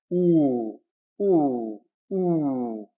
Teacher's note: when we pronounce the O it's actually further back oh and then F ah you can see it quite far